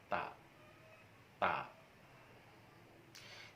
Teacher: Makhraj huruf ta yaitu dengan cara menyentuhkan ujung lidah dengan dua gigi seri atas dan dengan cara mengalirkan nafas.